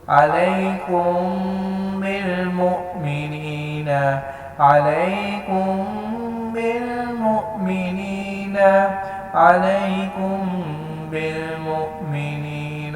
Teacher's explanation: میم ساکنہ کے بعد اگر با آ جائے تو یہاں پہ میم کے اوپر غنہ کریں گے